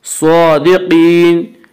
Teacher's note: قاف بھی حروف مستعلیہ میں سے ہے، اس لیے قاف کو پر پڑھیں گے۔